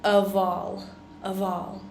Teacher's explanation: here is how we pronounce the word of right we only have one F and it actually turns out to sound more like a V sound than a f sound